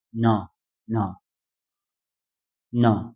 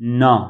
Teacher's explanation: यो तपाईको जिब्रो चाहिँ ट्याक्कै हाम्रो दाँतको पछाडिको गिजा हुन्छ नि त्यहाँबाट चाहिँ निस्किनु पर्यो है